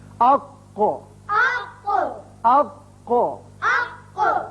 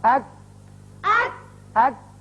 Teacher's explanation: کاف، یہ جو دونوں حروف ہیں زبان کا آخری حصہ کوے کی جو قریب ہے، جب اوپر تالو سے لگتا ہے تو ادا ہوتے ہیں۔ قاف پر کر کے پڑھتے ہیں، کاف ذرا ہٹ کر نیچے کی طرف سے نکلتا ہے اور باریک ہوتا ہے